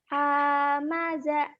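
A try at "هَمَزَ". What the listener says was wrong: Enak aja panjang. Hamaza enak ya. Kalau nggak ada yang panjangin ya nggak dipanjangin. Kecuali ada pemanjang ya, ada pemanjang, ada alif, ada kasar, ada iya, ada doma.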